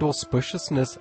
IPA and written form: ɔˋspɪʃəsnɪs (auspiciousness)